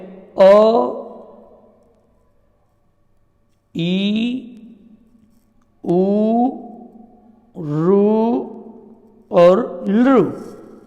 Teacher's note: जो स्वर का उच्चारण एक मात्रा जितने समय में हो सकता है उसको हम ह्रस्व स्वर कहते हैं